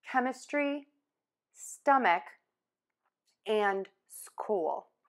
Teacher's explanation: And again, two letters are going to be one sound, the K, K, to make a K sound. Tip of the tongue is low in the mouth, back of the tongue is pull up, air just puffs out,